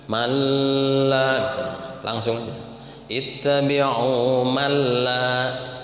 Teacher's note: nun mati menghadapi lam itu idgham bila gunnah.